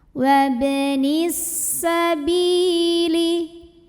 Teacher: Bi mad tabi'i zahiri karena ada ya sukun yang didahului baris kasrah, maka baknya panjangkan 2 harokat.